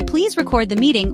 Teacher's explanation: is the word record when we say please record the meeting we stress the second syllable meaning to capture audio or video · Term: word stress